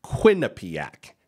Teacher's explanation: it's Quinnipiac emphasis on the first syllable